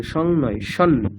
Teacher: ওম সং নো মিত্রঃ সং বরুণঃ আপনি সং বলছেন, সং নয়, সন। অনুসারটাকে নকার বলবেন।